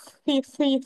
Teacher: Sebab makhraj kha berada di hujung kerongkong tu. Dekat-dekat dengan lidah dah tu.